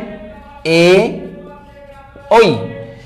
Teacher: এদের উচ্চারণ স্থান দুই জায়গা থেকে, একত্র দুই জায়গা থেকে, কণ্ঠ আর তালু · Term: কণ্ঠ তালব্য বর্ণ